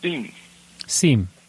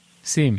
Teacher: You don't sound the M very much, you know, like a SIM card.